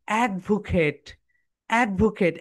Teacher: এখানে my dear soldiers, এই যে ভা ভা সাউন্ডটা, এখানে যখন তোমরা ভিটা উচ্চারণ করবে, উপরের দাঁত নিচের ঠোঁটের সঙ্গে টাচ করে বলো